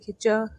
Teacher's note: देखिए च दांत नहीं आ रहा है